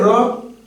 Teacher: कहा जाता है क्योंकि इसको बोलते समय इसका उच्चारण करते समय जो जीव है वह तालू से लुढ़क लुढ़क कर छूती है कंपन थोड़ा करती है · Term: लुंठित वर्ण